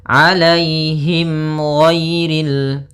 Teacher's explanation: ada mim mati bertemu dengan huruf ghain, maka dinamakan dengan izhar syafawi. Maka harus jelas suara mimnya.